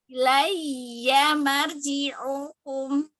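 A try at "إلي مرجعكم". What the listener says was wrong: Nah, ini lagi nih. Ini ada ro sukun sebelumnya fathah. Jadi ro-nya harus tebal dong.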